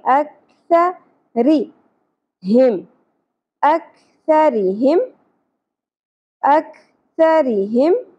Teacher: سا کو ہم بغیر سیٹی کے نرمی سے پڑھتے ہیں. ٹھیک ہے, سیٹی کی آواز نہیں آنی چاہیے.